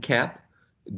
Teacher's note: the back of the tongue is pressed against the um vellum or a soft palate voiceless good oral sound